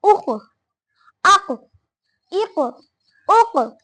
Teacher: کوے کے متصل زبان کی جڑ جب اوپر کے تالو سے لگے تو قاف ادا ہوتا ہے